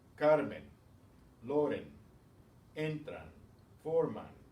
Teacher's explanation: stressed on the next to the last syllable. They end in vowels. These end in N, following the same rule.